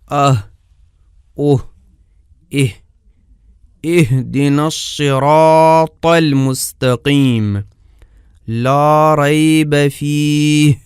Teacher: حلق کی انتہا سے ہا ادا ہوتی ہے۔ اس طرح کے آواز کی 2 تاروں کے کانپنے سے خارج ہوتی ہے۔ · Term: ہا کا مخرج